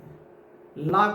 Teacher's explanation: ला को पार्श्विक कहेंगे